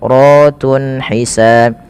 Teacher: Kemudian ratun ada mad tabi'i pada lafal ra, dan ra-nya di sini dibaca dengan tafkhim karena ra-nya dibaca berharakat fathah, maka dia dibaca dengan tebal